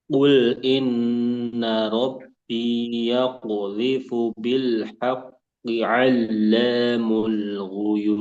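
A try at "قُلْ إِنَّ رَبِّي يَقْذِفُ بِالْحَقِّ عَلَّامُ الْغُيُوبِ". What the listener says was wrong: Qul, qul. Nah, itu eh, nanti disempurnakan juga. Nah, ya nanti antum PR-nya di Qaf.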